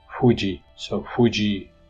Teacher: Put your lips in the position for saying pa, but then open your lips slightly to allow continuous airflow to go through.